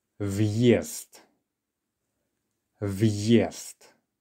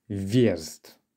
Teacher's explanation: to the difference viest with the hard sign versus without so when you don't have the hard sign there the ya almost disappears and the ver and yeah together blend in whilst if you put in the hard sign it tells you